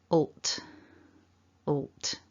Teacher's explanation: So my mouth is open a little. The tongue is just up behind the top teeth. And as we make the t, we just release a little puff of air from the mouth. So gliding from the all to the t sounds like this.